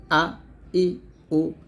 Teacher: হামজা যেন হলকে শুরু হতে শক্তভাবে আদায় হয়